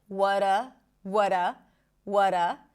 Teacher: So we connect the what with the schwa sound. That is a reduction of r.